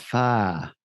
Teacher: it's just a very relaxed tongue and you kind of are dropping the r off the end you almost don't you drop the consonant nearly all together and